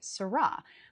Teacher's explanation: A lot of actors tend to put the emphasis on the second syllable. They say sarra.